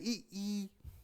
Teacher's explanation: जब आपने ई का उच्चारण किया तो आपका मुंह जो है, होंठ जो है ऐसे खिंच गए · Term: अवृत्ताकार स्वर